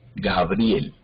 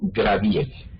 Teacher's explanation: Muchas personas pasan esa R que está después de la B y la colocan después de la G y dicen Graviel. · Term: metátesis